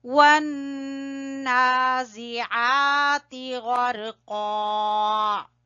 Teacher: نون کے اوپر ہم غنہ کریں گے اور کھڑی زبر کو کھینچیں گے